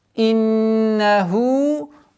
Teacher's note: Удлинение даммы в размере 2 огласовок. Естественное удлинение. И удержание назализации в размере 2 огласовок.